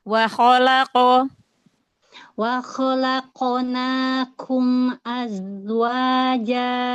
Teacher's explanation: Coba huruf qafnya dijaharkan lagi, jangan ada hamas walaupun sedikit.